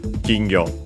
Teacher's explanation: Accent on the first syllable, so be careful, an exception.